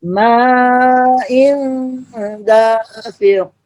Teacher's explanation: Suara nun dan tanwinnya disamarkan, samar-samar. Kedengaran tapi samar. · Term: ikhfa